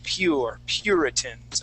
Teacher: we put sort of an I before that U, and that's how we make that U or sound